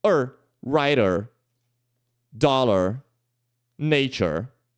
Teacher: é o som do chuá seguido do som de R · é o som do schwa seguido do som de R. É um writer, dollar, nature, De novo, não é na sílaba tônica, então ele é um pouquinho mais curto.